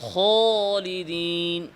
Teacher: মেলিকি, অনেকে আছে না বেশি ইস্তারি করে ফেলে পড়ারে, তখন আলিফটা ইমালার দিকে চলে গেছে। তারপরে আলিফের আওয়াজের সাথে কিছুটা ওয়াওয়ের আওয়াজের মিশ্রণ ঘটানো, যেমন খালিদিনকে খলিদিন আছে না, এটাও আছে, এটাও বেশি ইস্তারি যারা করে পড়ারে।